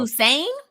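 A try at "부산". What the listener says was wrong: I thought it was Busan. Is Busan? Is it Busan or Busan?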